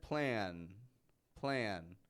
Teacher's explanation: feel that long n Sound on the end of the word plan